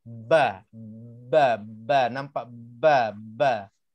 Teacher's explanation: Kan nampak kita dua bibir mulut kita bergerak waktu sebutnya ba tu